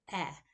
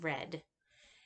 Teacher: the epsilon is a low, mid, front, lax, unrounded vowel.